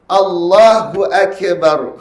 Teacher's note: Dia tambah eko pada huruf kaf tersebut.